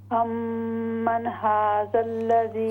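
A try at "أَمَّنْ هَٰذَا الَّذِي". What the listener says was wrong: ہاں جی، نون باؤنس ہو رہی، یہ نہیں ہونی چاہیے.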